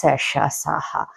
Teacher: ఊష్మములు గాలి ఊదుతూ పలకబడే అక్షరాలు